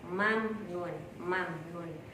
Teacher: Mam ini ada mim sukun ya. Mim sukun bertemu dengan nun, maka hukumnya adalah izhar syafawi, maka membacanya harus dijelaskan.